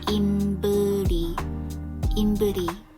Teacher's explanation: there's no V sound in Korean. Instead, we pronounce it as a B sound. So it's imbeuri, imbeuri.